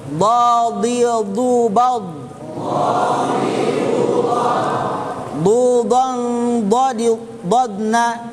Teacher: Hafatil lisan, samping lidah beserta gigi geraham atas. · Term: huruf dad